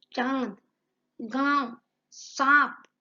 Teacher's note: अनुनासिक स्वर चंद्रबिंदी वाले मुख और नाक दोनों की ध्वनि से निकलती है